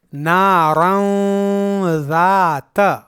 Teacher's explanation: یہاں اس تنوین کا اخفا ہوگا اس طرح نارن ذات، کیونکہ جب نارن کو ذاتا کے ساتھ ملا کر پڑھیں گے تو یہ الف درمیان سے گر جائے گا